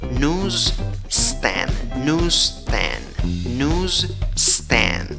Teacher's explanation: La primera sílaba suena como news, newsstand, newsstand. No es fácil conectar la Z con esa S que viene luego